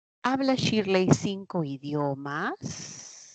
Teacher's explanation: hay una inflexión tonal ascendente. El último tono se va para arriba.